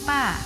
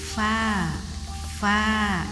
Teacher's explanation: Misalkan kita mengucapkan pa, guru kita berkata kepada kita, bukan pa nak, tetapi harus keluar angin. Bukan dari dua bibir kita, tetapi gigi kita yang atas harus menempel ke bawah